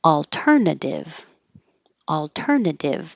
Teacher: The second T sounds like a D because it's between two voiced sounds. Your voice is on, leave it on.